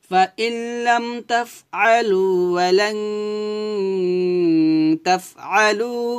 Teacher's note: তাফ বাতাস বের করবেন হামসে হরফ বাতাস বের করতে হবে